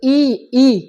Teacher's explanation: ई यानी कि क्या हो रहा है तालु से आवाज निकल रहा है। तो ई का उच्चारण कहाँ से होता है तो ताली से होता है।